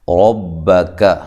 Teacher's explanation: را کو خوب موٹا کریں، کاف کو باریک، با کو بھی باریک، دونوں کو لمبا بھی نہیں کرنا۔